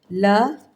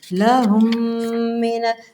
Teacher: ہیں جی، یہ آذا لہم، دیکھیں میم پہ تشدید تھی، لہم، ہونٹوں کو میں نے بند کیا، میم پہ تشدید ہے اس لیے غنے کا اظہار کر رہی ہوں نا